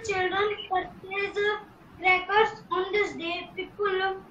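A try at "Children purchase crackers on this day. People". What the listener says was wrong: बेटा full stop, थोड़ा sentence खत्म हो जाए तो थोड़ी सांस ले लिया कर।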